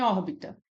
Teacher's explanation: Em órbita, nós temos como sílaba mais forte a primeira, o OR, que é a antepenúltima.